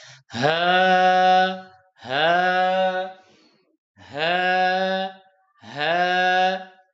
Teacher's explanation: یہ حلق کے آخری حصے سے ادا ہوتی ہے، جو چھاتی کے بالکل قریب سے ادا ہوتا ہے